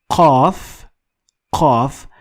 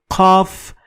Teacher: qaf has no direct equivalent in English, but it comes closest to ka sound. But you need to dig a little deeper in your throat to find your qaf. So qaf is a little bit backward in your throat.